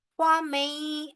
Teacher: गौरन फ़मई, आगे देखे या मुशद्दद है, लिहाजा नून साकिन जो है वो साइलेंट हो जाएगी। हमारी मीम जो है वो डायरेक्ट जाके या से मिलेगी